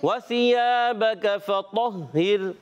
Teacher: ज़बान का सिरा ऊपर के दांतों के अंदरूनी किनारे से सा अदा होता है। साकिन के ज़ेर है, वाव पर ज़बर है, हरकत नहीं खींचेंगे।